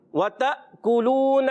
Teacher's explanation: یہ چھوٹی سی دال جیسی چھوٹی سی دال ہے، تو جب کبھی یہ الف کے اوپر آ جائے تو اس کو جزم کہتے ہیں، سکون کی علامت ہے. یہ الف ہمیشہ جھٹکے سے ادا ہو جاتا ہے کیونکہ یہ الف نہیں رہتا، یہ حمزہ بن جاتا ہے